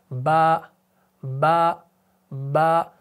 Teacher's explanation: जब दोनों होंठ आपस में मिलते हैं ना तो बा अदा होता है।